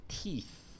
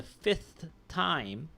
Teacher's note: Or, for the fifth time, the th at the end. That's your voiceless dental fricative.